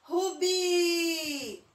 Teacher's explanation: Eu demorei mais no bi. Então, a sílaba tônica vai ser a última.